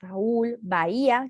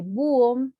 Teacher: la voz se carga sobre la vocal cerrada y como están junto a una vocal abierta tona, deben tildarse.